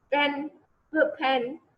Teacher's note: तो आप देखें कि आपके जो वोकल कॉर्ड्स हैं वो वाइब्रेट नहीं करते